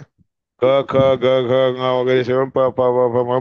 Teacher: क ख ग पासून म पर्यंत जे स्पर्श करून उच्चारले जातात ते सगळे हे स्पर्श म्हणतात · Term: स्पर्श वर्ण